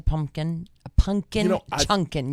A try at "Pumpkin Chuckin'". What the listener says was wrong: No, there's no N in Chunkin'. It's Chuckin'. CHUCK.